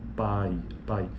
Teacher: na fala naturalmente a gente percebe que é a vogal proeminente ou a vogal mais forte a vogal a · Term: ditongo decrescente